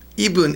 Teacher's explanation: It sounds like the B is kind of moved over.